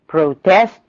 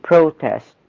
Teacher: الناون بياخد الستريس على أول syllable. الverb بياخد الستريس على تاني syllable. ف protest is a noun, protest is a verb.